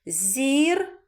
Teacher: на другий склад звука А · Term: наголос